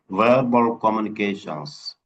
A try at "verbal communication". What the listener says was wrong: There's no S in the end. Communication.